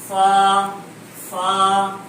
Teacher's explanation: ثنایا علیہ کا کنارہ اوپر کے دانتوں کا کنارہ اور نیچے کے ہونٹ کی تلی استعمال ہوگی فا میں